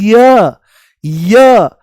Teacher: य बोलते ही इ की ध्वनि आती है। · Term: अर्ध स्वर